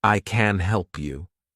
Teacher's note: if I want to say I can help you meaning that I'm able to help you then I'm emphasizing the word help